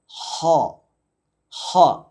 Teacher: ഹാഇൻ്റെ മഖ്റജ് തൊണ്ടയുടെ തുടക്ക ഭാഗം